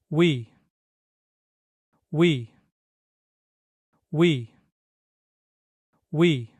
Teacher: Koreans pronounce it by smoothly moving from the U shape to the E shape